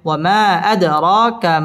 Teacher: ওয়ামা আদ, দাল কলকলার হরফ, ধাক্কা দিয়ে পড়তে হবে। আদ র, র পুর হবে এবং র খারা জবর, এক আলিফ টান দিয়ে পড়তে হবে।